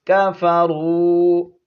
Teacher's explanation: ان، آگے نون کو ہم نے لام کے ساتھ ملانا ہے، نون لام زبر نل، ان لام زبر لا، زال یا زر زی، نون زبر نا، ان الذین، یا حرف مدہ ہے، ایک الف کی مقدار کھینچ کر پڑھیں گے، ان الذین کفروا، یہاں پر واو مدہ ہے، واو ساکن ہے، اس سے پہلے پیش ہو تو واو مدہ ہوتی ہے، ایک الف کی مقدار کھینچیں گے